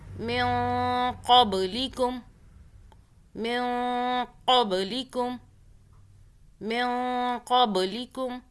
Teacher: زبان کو ٹچ نہیں کرنا تالو سے، قاف کو موٹا پڑھنا ہے اور اس با پہ قلقلہ کرنا یعنی کہ جھٹکا دینا اس با پہ۔ پڑھتے ہیں، یہ قاف جو آ رہا ہے نا اس نون ساکن کے بعد، یہ ہے اخفا کا حرف، ٹھیک ہے، یعنی کہ ہم اخفا کریں گے پچھلے اس نون ساکن پر، نون کو چھپائیں گے۔